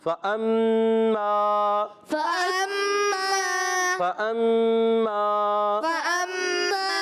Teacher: یہ الف نہیں حمزہ ہوتا ہے کیونکہ اس کے اوپر زبر آ گیا، تو اب اس حمزہ کو میم سے ملانا ہے، میم مشدد، میم مشدد میں کیا ہوگا؟ ایک الف کا غنہ ہوگا